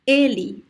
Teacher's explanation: when I pronounce the closed E, my teeth are a little bit more closer to, like the lower part closer to the upper part.